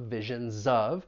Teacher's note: So visions of, we're gonna link that consonant Z with the vowel sound in of